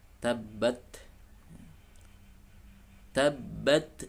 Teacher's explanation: Baik, ayat pertama tabbat, ya, ada tak sukun, ya. Suaranya mengandung syiddah atau kuat suaranya, kemudian alirkan nafas